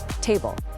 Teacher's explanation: When a T is at [music] the start of a word, it's a sharp hard T. You get a little puff of air.